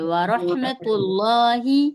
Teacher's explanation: अब यहां पर लफ्ज अल्लाह से पहले ता के ऊपर पेश होगा तो हम लफ्ज अल्लाह को मोटा पढ़ेंगे व रहमतुल्लाह वाव ज़बर व ब ज़बर ब वबा र ज़बर